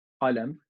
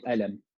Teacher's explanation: Egyptians, they'll pronounce it like a hamza. So instead of saying qalam, they'll say alam.